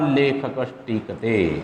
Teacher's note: ट का उच्चारण स्थान मूर्धा होता है तो ये इसका भी उच्चारण स्थान मूर्धा होता है, सेम अपने परिवार के सदस्य को ये बुला लेता है।